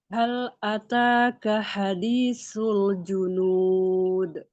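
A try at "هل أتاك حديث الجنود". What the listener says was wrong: Hal ataka hadithul junud. Lamnya menebal. Ya ditipiskan.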